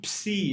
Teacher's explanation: Tenemos un sonido en los labios y de ahí regresa la lengua a la parte dental